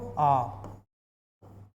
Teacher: जब मुख द्वार पूरा खुलता है तो उसको एक नाम दे दिया जाता है, विवृत्त